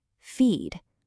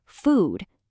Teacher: Your tongue is all the way at the front. Now say food. It gets pulled all the way back. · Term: tongue position